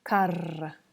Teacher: A double R has a long rolling sound, like r, like carro.